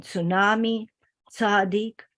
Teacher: The sound ts, the affricate, like in tsunami, tzadik, is found in Japanese and Yiddish Englishes.